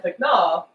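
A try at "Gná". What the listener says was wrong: It is not a silent G.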